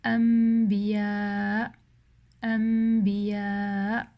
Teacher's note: whenever you have a noon sakina or tanween and it's followed by a ba, the noon sakina turns into a meme · you're going to read a meme sakina and not a noon sakina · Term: al-iqlab